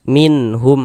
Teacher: Minh tidak didengungkan. Baca pendek saja. Jangan dibaca min dipanjangkan gitu. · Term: izhar halqi